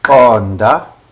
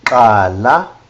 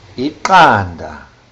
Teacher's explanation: articulated by raising the front part of the tongue to the palate and then sucking downwards. The resulting sound should be an audible pop. And this sound is sometimes referred to as the palatal click.